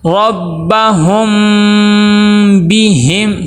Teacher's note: اخفاء شفوی کریں گے، یعنی میم کی آواز کو ناک میں لے کے جائیں گے۔ ربہم بہم، با کے نیچے زیر ہے، معروف ادا کرنا ہے، مجہول ادا نہیں کرنا اور لمبا بھی نہیں کرنا۔